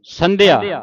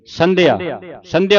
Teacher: ਇਸਨੂੰ ਢਿੱਲਾ ਨਹੀਂ ਉਚਾਰਨ ਕਰਨਾ ਜਦੋਂ ਢਿੱਲਾ ਉਚਾਰਨ ਕਰਾਂਗੇ ਫਿਰ ਦਦੇ ਦੀ ਆਵਾਜ਼ ਇੱਥੇ ਆਵੇਗੀ ਸੰਧਿਆ ਸੰਧਿਆ ਉਚਾਰਨ ਕਰਨਾ ਸੰਧਿਆ ਬਾਦੰ ਇਥੇ ਵਿਸਰਾਮ ਲਾਉਣਾ ਪੜ ਪੁਸਤਕ